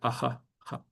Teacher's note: the h with a dot. So here is not a retroflex sound, it's just the visarga